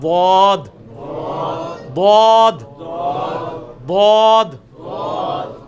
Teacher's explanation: اس میں بھی جو آپ لیفٹ والے کو اگر اوپر کی دانتوں کی جڑ میں لگائیں نا, زبان کی لیفٹ والے کنارے کو اوپر کی دانتوں کی جڑ میں اس طرف, تو بہت آسانی سے نکلتا ہے